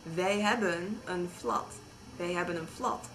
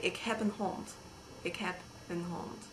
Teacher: But if you say wij hebben een flat, wij hebben een flat, then in hebben you actually do say the B, whereas in heb you say P